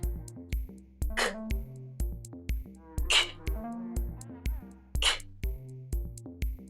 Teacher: you stop the airflow between the center of your tongue and the top of your mouth · its stop sound, which is a sound made by building up air pressure by stopping the flow of air and then releasing it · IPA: /k/